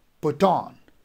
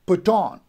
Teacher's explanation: Put would be unstressed and on would be stressed. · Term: iambic foot